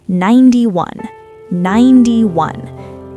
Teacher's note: The stress is on the first part, 9.